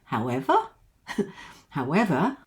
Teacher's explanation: There's always a comma after, however, but because of this word itself, it tells us there is more to come. There's always more to come after the word, however, so you can go up at the end if you want to